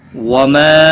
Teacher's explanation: مد منفصل ہے، 3 الف کے برابر کھینچ کر پڑھیں گے